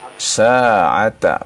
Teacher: Dua harokat saja bacaannya ya. Sa'ata, bukan lebih dari dua harokat ya.